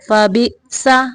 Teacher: حمزہ کو جھٹکے سے پڑھنا ہے